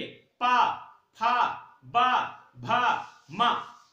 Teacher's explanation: पावर्ग में क्या होगा, दोनों ओठ आपस में चिपकेंगे। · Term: ओष्ठ